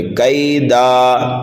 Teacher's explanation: دال پر جب ہم وقف کریں گے تو یہاں پر وقف بالابدال ہوگا، دو زبر کو الف سے بدل کر کے پڑھیں گے